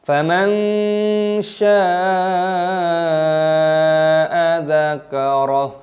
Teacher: shinnya dipanjangkan 6 ketukan mad wajib mutasil